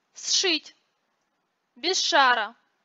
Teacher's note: Сочетание «сш», «зш» произносится как долгий «ша». Долготу обозначают обычно черточкой сверху или двумя точками, двоеточием, реже двойной записью звука.